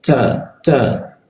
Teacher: ta itu ujung lidah bertemu gigi ada bocor halus